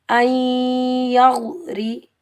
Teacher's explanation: را کے نیچے زیر، را کو ہم باریک پڑھیں گے کیونکہ را کے نیچے زیر ہے، اگر زبر ہوتا تو موٹا پڑھتے، را کے نیچے زیر ہے، اس کو ہم باریک پڑھیں گے